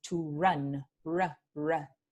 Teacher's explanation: La vibrante simple se vuelve en r, como el inglés